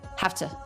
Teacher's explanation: we actually change the V to the F